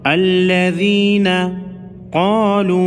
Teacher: قاف حروف مستعلیہ میں سے ہے، موٹا پڑھیں گے، چھوٹی مد کو 3 الف کے مقدار یعنی 3 سیکنڈ لمبا کریں گے۔